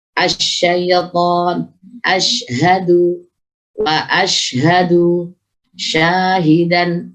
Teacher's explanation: shin tidak melibatkan syafatain, hanya ada giginya.